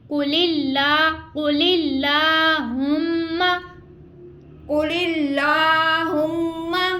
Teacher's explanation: قاف حروف مستعلیہ اس کو پر پڑھیں گے اور اللہ عز و جل کا یہ لام ہے اس سے پہلے حرف کے نیچے زیر ہے تو اس کو ہم باریک ادا کر رہے ہیں اور آگے میم شدت کا غنہ ہے.